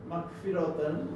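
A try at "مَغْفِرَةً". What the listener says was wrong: এখানে না বাড়ে, রয়ের জন্য ফাতা তবিলা, মাগফিরাতান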